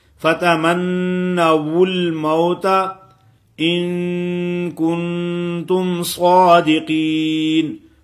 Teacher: فتمنا، نون مشدد ہے، سختی سے پڑھیں گے اس کو